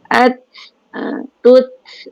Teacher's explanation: apabila kita sebut huruf ta atau huruf-huruf alham, kita sebut tu kemudian ada keluar angin daripada makhraj itu